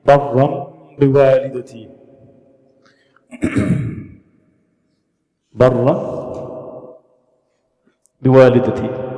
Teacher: This tanween got converted into amim. It's become like barram biwalidati. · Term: iqlab